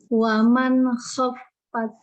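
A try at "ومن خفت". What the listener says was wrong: Khaffat. Ini fa-nya kurang ngalir lagi. Coba lagi. Yang dialirkan fa-nya bukan tak-nya. Tak itu sekali tak aja. kalau tak itu cuma ngalir pes satu kali udah. Waman khaffat. Udah selesai, nggak ada. Nggak boleh gitu.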